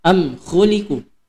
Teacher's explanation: Jadi am khuliqu mim mati bertemu dengan kha. Jadi tidak didengungkan. Jadi kan izhar itu dia bermakna jelas dan terang. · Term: izhar syafawi